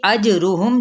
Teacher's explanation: जीम पे कलकला, मीम पे इजहार शफवी